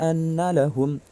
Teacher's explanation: Nun mim yang bertasydid. Maka cara bacanya dengung. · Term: gunnah musyaddadah